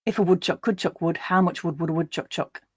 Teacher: in a more northern english accent where i don't use that uh sound so you can just hear the o sound